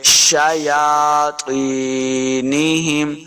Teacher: یا کے اوپر کھڑی زبر ہے، اس کو دو حرکات لمبا کرنا ہے.